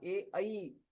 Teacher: तथा ए ऐ एतेषां कण्ठतालव्यौ इति उच्चारणस्थानम्।